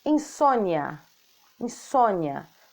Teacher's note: vogal é pronunciada mais fortemente e a semivogal de modo mais fraco